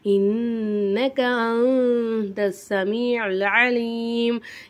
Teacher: இன்னக நூனுக்கு மேலே சத்து இருக்கனால இது நல்லா அழுத்தி உச்சரிக்கணும். அந்த சுக்குன் பெற்ற நூனுக்கு அடுத்ததா தா வந்திருக்கு.